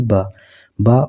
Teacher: अल्पप्राण तथा घोष वर्ण उदाहरण है